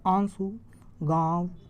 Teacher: अनुनासिक के उच्चारण में नाक से नाक से बहुत कम सांस निकलती है और मुख से अधिक निकलती है